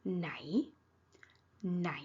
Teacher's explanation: ไหน ไหน rising tone ไหน ไหน means which